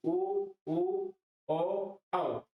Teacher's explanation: देखो उ, उ यानी ऋस्व, उ और दीर्घ उ, ओ और औ, ये चार स्वर हैं जिनका उच्चारण करने पर होठों की स्थिति गोलाकार हो जाती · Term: वृत्तमुखी स्वर